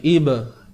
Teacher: yang ba ni ada lantunan sikit saja. Qalqalah sughra, qalqalah kecil.